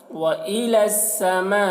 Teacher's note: یہ لام کو سین کے ساتھ ملا کر پڑھا جا رہا ہے، یا کو نہیں پڑھا جا رہا ہے۔ وَإِلَى السَّمَاءِ، الف میں مد ہے تو زیادہ کھینچیں گے۔